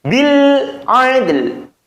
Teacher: kedengaran masih lamnya walaupun itu samar, dan memang harus dibaca samar. Tapi tetap kedengaran lam sukunnya.